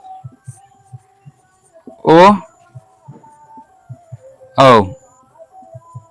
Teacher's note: कंठ ओठ से ओ ओ बोला जाता है